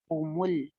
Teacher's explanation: अम इंद हुमुल गैबु, हु होंठ गोल करें पेश के ऊपर, मीम पे भी होंठ गोल गोल हो जाएंगे और लाम को जमा के रखेंगे।